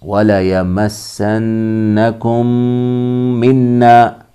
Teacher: میم کو میم میں ملائیں گے اور پڑھیں گے غنہ کے ساتھ، وَلَيَمَسَّنَّكُم مِّنَّا، یہاں بھی غنہ ہوگا۔ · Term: ادغام شفوی